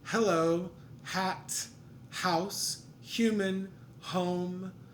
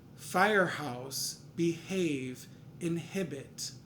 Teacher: If there are compound words, then that H is audible, that H is aspirated